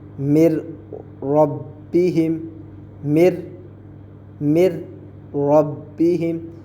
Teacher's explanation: یہاں ہم نے میم کو را سے ملا دیے, 2 حرفوں کو ہم نے ملا دیا ہے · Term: ادغام